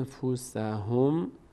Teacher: باید نون رو از مخرجش ادا نکنیم و از بینی ادا کنیم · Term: اخفا